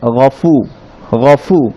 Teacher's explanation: ফাতে বাতাস সহ উচ্চারণ হবে বলেছিলাম আমরা